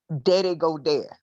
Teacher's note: take the TH away and add the D, which is a much more comfortable and historic positioning